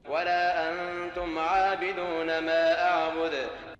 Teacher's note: his pace is faster, and the prolongation of the long vowel is no more than 1 second